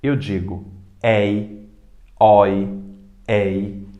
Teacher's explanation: todas essas palavras do grupo A e grupo B possuem ditongos abertos